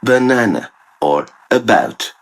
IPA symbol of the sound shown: ə